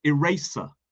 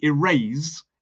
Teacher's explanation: So they use the unvoiced S sound, whereas we would use the Z.